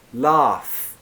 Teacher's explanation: laugh is that longer a with an unvoiced F